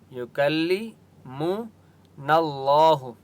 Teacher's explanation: یہاں پر اللہ کا نام موٹا ہوگا کیونکہ اس سے پہلے نون کے اوپر زبر ہے